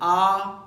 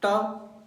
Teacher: जब आपने आ का उच्चारण किया तो मुख पूरा खुला था। ऐसी स्थिति में वायु के मार्ग में कोई बाधा नहीं आई, वह सीधे निकल गई। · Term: स्वर वर्ण